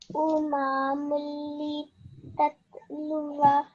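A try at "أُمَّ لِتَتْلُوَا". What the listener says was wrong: Just make sure that your fatha, dhamma, and kasra are equally long, which is just 1 second, okay? Your meme here, uma, your meme was a bit longer than 1 second, okay? So, umalitatluwa. So this is how you would recite it if you were not going to pause here, if you were not going to pause after the vowel.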